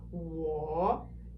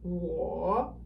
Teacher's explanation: it's descending and then ascending. 我, right? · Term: third tone